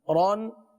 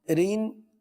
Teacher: را کے نیچے دو زیر کی تنوین ہو تو را کو باریک پڑھیں گے